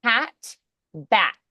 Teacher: So the P is unvoiced, the B is voiced.